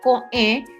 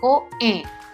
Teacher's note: Yo hago un pequeño espacio de sonido entre una vocal y otra. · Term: consonante glotal